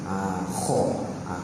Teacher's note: Huruf kha kita dah sebut dah sebelum ni makhraj dia pada hujung kita punya kerongkong. Hujung kerongkong.